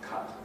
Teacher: in the cut vowel, the way I've just said it there is no lip rounding.